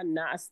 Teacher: ناس میں نون پر زبر کی حرکت تھی تو پہلے ہم نے غنہ کرا اور پھر اس کو نہ کر کے نکالا